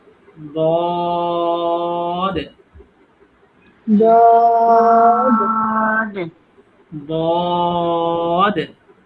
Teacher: আমরা এটা টেনে বলবো এবং মোটা করে বলবো